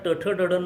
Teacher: जिव्हेचा तालूशी वक्र संपर्क असेल रिट्रोफ्लेक्स तर त्यावेळेला त्याचा टठ डडनं किंवा मूर्धन्य असा हे होतो